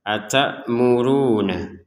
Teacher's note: Di sini yang perlu dijelaskan adalah panjangnya ro harokat dhammah, ya. Kita membacanya dua harokat. Atamuruna. Jadi kita membacanya dua harokat.